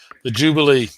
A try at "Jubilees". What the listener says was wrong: The Jubilees. I think you're saying that wrong. Jubilees. I don't know why you keep saying Jubilee.